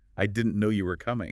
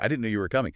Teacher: try it with a little lift, a little emphasis on no and coming